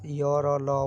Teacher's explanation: इसमें आपको कहीं भी आपका मुंह के अंदर कहीं भी जीभ कहीं भी स्पर्श नहीं करेगा